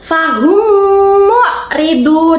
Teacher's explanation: Nah, bacanya tidak fahum mu'ridun, akan tetapi fahum mu'ridun. Antara mim sama mim dibacanya menjadi satu, berdengung. · mem sukun bertemu dengan mim, dibacanya berdengung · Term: idgham syafawi